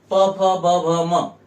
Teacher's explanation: तालव्य म्हणतो प फ ब भ म हे येतात ओष्ट्य मध्ये प फ ब भ म म्हणताना आपल्या दोन्ही ओठांचा एकमेकाशी स्पर्श होतो आणि मग उच्चार बाहेर येतो आणि म्हणून त्यांना आपण ओष्ट्य म्हणतो लक्षात आल का आणि म्हणून